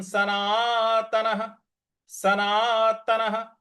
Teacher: 'ना' के बाद आने वाले विसर्ग का उच्चारण 'हा' की तरह होना चाहिए क्योंकि इसके बाद कोई अक्षर नहीं है।